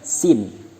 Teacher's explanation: Makharijul hurufnya bertempat pada ujung lidah mendekat di antara gigi depan atas bawah.